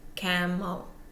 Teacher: That EL ending, which is quite common, will always be a schwa E. So it will go unstressed.